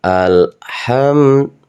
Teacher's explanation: Dan ini mim sukun ya. Hukum bacaan mim sukun ini harus jelas karena izhar syafawi ya.